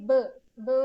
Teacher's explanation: അതിന് എക്സാമ്പിൾസ് ആയിട്ട് പറയുന്നതാണ് പ് എന്ന് പറയുമ്പോൾ നമുക്കറിയാം നമ്മുടെ രണ്ട് ചുണ്ടുമാണ് ടോട്ടൽ ക്ലോസറിൽ വരുന്നത്. അഗെയിൻ ബ് എന്ന് പറയുമ്പോഴും രണ്ട് ചുണ്ടാണ് ടോട്ടൽ ക്ലോസറിൽ വരുന്നത് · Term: ബൈലേബിയൽ പ്ലോസീവ്സ്